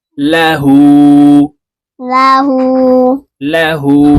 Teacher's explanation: উল্টা পেশের উচ্চারণ ঠোঁট গোল করে এক আলিফ টেনে পড়তে হবে